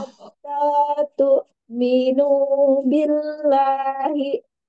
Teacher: Tapi harus menyentak karena hamzah sukun ya.